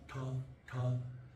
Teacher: the retroflex, the roof of the mouth